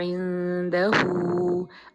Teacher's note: अब हु को 2 हरका करना है। अब उर्दू का मसहफ देखेंगे वहाँ पे उल्टी पेश नज़र आएगी, तो उल्टी पेश को भी हम 2 हरका पढ़ते हैं।